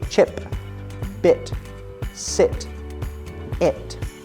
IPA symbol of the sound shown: ɪ